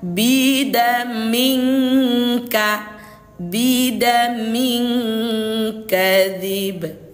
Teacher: Huruf kaf ini kan jauh dia makhrajul hurufnya. Jadi bunyinya itu lebih banyak dengung daripada samar gitu. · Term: ikhfa ab'ad